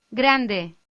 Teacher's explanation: In this exercise, we are faced with how tricky it is to lightly roll the R in grande. A 3D image will demonstrate how to reproduce this sound.